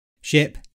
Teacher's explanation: the tongue is more central and the jaw slightly lower in ship. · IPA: /ɪ/